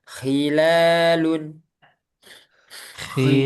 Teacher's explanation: Hati-hati jangan hi, tapi khi, agak kotor.